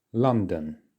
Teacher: It's the first syllable that we're emphasizing. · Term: stress